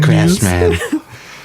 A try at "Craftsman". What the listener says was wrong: No T in craft.